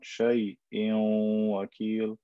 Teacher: I take the e or the n sound and I merge it with the wa sound.